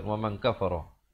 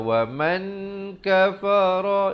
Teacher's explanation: Jangan baca wa man kafara, itu jadi bunyi izhar. Yang betulnya di sini bunyi ikhfa. Wa man kafara fa in, didengungkan di sini wajibul gunnah dua harakat.